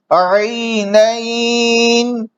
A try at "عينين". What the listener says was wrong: ये गलत घोट के शुरू में हमजा पैदा करना ये ठीक नहीं है.